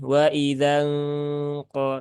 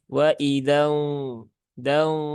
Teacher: Eng ya Bunyi Eng jadi ee dibaca dengan waid nah tapi karena qofnya itu huruf istilla atau huruf tebal maka eng-nya juga menebal Bukan waidangqo tapi waid da ya Jadi pas dengung juga sudah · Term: ikhfa ab'ad